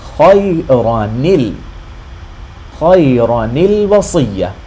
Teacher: Now notice that the ra fatha and the noon sukoon would be khayran in normal circumstances, but because of this exception, the way we pronounce it is we say khayra, and the noon sukoon gets a kasra below it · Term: iltiqa-as-Sakinain